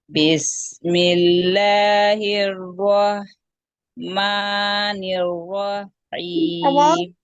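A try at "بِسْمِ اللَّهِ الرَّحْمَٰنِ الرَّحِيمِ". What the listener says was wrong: हां में आवाज बिल्कुल बंद हो रही है आपकी बंद नहीं करना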